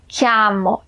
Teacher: O italiano fala o A bem aberto.